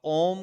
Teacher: नासिक से सीधी हवा बाहर आएगी ऐसी ध्वनि है वो अनुस्वार है